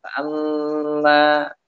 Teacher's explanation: ketika nun dan mim tersebut dalam keadaan bertasydid. Dalam keadaan bertasydid. Maka temponya memanjang. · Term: gunnah